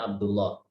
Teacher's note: kita membaca kata Abdullah dengan membaca lamnya tebal.